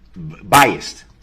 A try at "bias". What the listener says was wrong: Bias? No, bias. B-I-A-S. Not, there's no T at the end. Bias.